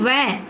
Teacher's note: फिर है दंतोष्ठ, दांत और होठ से बोला जाने वाला वर्ण वकार, यानी व। हम दांत और होठ की सहायता से हम व बोल पाते हैं